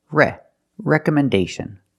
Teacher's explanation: letters the application itself we cannot say recommendation letters recomendation letters we have to move the stress to the first syllable re recommendation and the second syllable is pronounced with a close